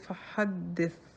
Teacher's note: یہ یاد رکھنا ضروری ہے کہ سین اور صاد میں صفت صفیر ہے، وہ سیٹی ہے، جو ث میں نہیں ہے۔ ث میں ہمس ہے، صفت ہمس۔ صفت ہمس جو میں نے پہلے بتایا، ہلکا سا ہوا کا اخراج آپ محسوس ہوگا